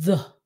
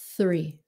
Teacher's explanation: cái the đó, it's a voiced. Mình phải dùng giọng nói chứ không phải là hơi thở.